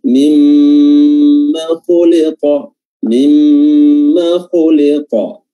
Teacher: Jangan dibaca ma-nya, jangan dibaca panjang